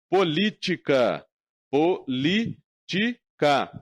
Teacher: Política. Minha sílaba tônica é o li. É a antepenúltima.